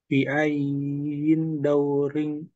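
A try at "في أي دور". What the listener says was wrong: Baik, fi ayyi daurin. Ayyi bukan ayyin. Ayyi.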